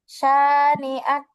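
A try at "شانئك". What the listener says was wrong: না, অক্ফ করলে আক হবে, কাফে সাকিন হয়ে যাবে।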